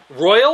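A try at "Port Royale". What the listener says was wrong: There's an E at the end.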